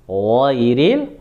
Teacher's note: huruf gha itu tenggorokan atas.